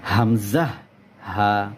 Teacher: এক নাম্বার মাখরাজ। হলকের শুরু হইতে হামজাহ হা।